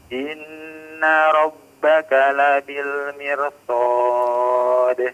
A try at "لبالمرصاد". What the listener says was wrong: Mirsad. Ra-nya ditebalkan.